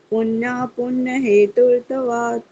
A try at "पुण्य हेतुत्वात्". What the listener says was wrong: हेतुत्वात् आधा तय ना, तो एकदम से बोलेगा, ये पूरा तय की तरह नहीं बोलेगा, तय नहीं बोलेगा, त्वात्।